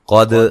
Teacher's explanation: قاف کو موٹا ادا کریں گے، دال کو ہلا کے پڑھیں گے. کا الف مدہ ہے.